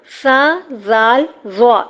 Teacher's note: حروف لسویہ سا زال را، یہ تینوں حروف نرمی سے پڑھے جاتے ہیں سیٹی کے بغیر